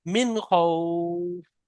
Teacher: হরফে হালকে হামজাহা আইনা কয়েন খয়ের মতো ক্ষয় এসছে, তাই নুন সাকিনের আওয়াজকে বিনা গুণনায় জাহির করে তাড়াতাড়ি জাহির করে পড়তে তাড়াতাড়ি হবে। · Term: ইজহার